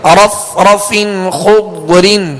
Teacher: ضاد ساکن ہے, لہذا کوشش یہ کیجئے کہ یہاں پر آواز میں جنبش پیدا نہ ہو, یعنی قلقلہ نہ ہو